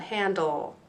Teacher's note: You always have a consonant with the LE. And notice how it makes a bit of a schwa sound, handle. Notice it gets a little lazy at the end.